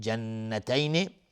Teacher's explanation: نون مشدد دو حرکت غنه میدیم